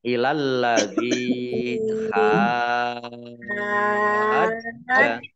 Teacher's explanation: Jadi dibaca panjang dulu 6 harokat, baru masuk ke huruf yang berharokat tasdid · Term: mat lazim musaqol kilmi